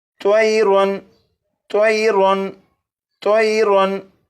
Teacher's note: इस लफ्ज़ के आखिर में और रा के ऊपर 2 ज़बर हैं, यानी तनवीन है। तनवीन के बाद हमज़ा है और हमज़ा हरूफ हल्की में से है, इसलिए तनवीन पर गुन्ना नहीं करेंगे